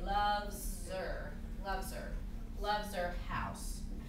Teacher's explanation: It takes me a little more time to say loves her, right? So if I'm speaking quickly, it's easier for me to just drop the H sound and just say loves her, loves her house.